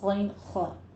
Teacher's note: ادنا حلق سے ادا کرنا ہے، غین خا